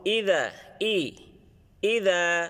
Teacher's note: জেরের সময় ঠোঁটটা ঠোঁট গুলো একটু ছড়িয়ে যাবে ছড়ে যাবে যেমন ইদা ইদা তারপরের হরফ আসছে দাল জবর যা